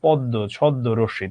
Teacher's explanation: তার মানে তুমি নিজেই টেকনিক্যালি বলতে পারছো যে ম ফলার সঙ্গে যুক্ত বর্ণ হিসেবে যে বর্ণটা থাকে সেই বর্ণটা দ্বিত্ব হয়। ময়ের উচ্চারণ হবে না, কিন্তু সেই বর্ণটা দ্বিত্ব হয়